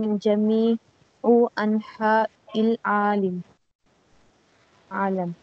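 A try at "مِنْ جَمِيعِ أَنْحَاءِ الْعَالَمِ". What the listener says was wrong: من جميعي بلکہ یہاں پہ جميعن ہے تنوین ہے جميعن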